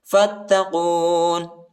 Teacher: فا کو تا کے ساتھ ملائیں گے، الف نہیں پڑھا جاتا، الف کے اوپر حرکت نہیں ہے، اور قاف کو موٹا پڑھیں گے